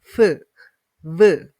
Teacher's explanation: involve the lower lip and upper front teeth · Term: labiodental